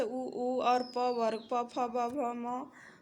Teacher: दोनों ओठों के स्पर्श से बोले जाने वाले हैं ओष्ठ वर्ण कहलाते हैं